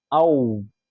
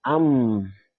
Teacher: So wow, for example, when you say ow or mim am, you experience that there is vibration in your vocal cord, and at the same time, there's less passage of air when you put your hand in front of your mouth. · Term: huruf al-jahr